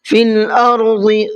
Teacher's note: ضاد کو منہ بھر کے پڑھنا ہے